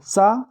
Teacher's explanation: सा जो बोला जाता है वह दंत से बोला जाता है